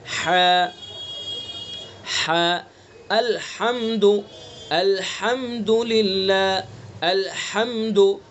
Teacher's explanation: हा को वस्त हल्क के दरमियानी हिस्से से अदा करना है।